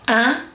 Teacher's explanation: So here we have one which is E, I, so I and N. I and N combined together, or I and M combined together, gives you a nasal vowel that is un.